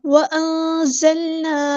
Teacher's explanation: زا کو سختی سے ادا کرنا ہے، سیٹی آئے گی ، اور لام کو ہلانا نہیں ہے، وَأَنزَلْنَا نہیں پڑھنا، وَأَنزَلْنَا · نون ساکن کے بعد چھپا دیں گے، اخفا ہوگا، باریک اخفا